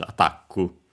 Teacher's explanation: The additional U, of course, because the K can stay on its own. The accent is just like in English, attack, on the ta